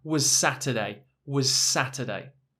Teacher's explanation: Now, actually what happens here is because the end of was is an s, and the start of Saturday, the end is both s and the start is s. So we mix the words together.